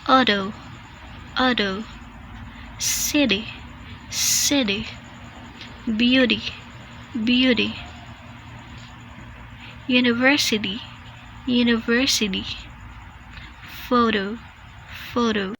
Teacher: in this case T is not pronounced as T but rather quick d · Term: flap T